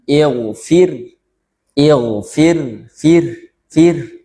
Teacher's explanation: dibaca tipis itu seperti menghembuskan napas atau mengalirkan udara di penghujungnya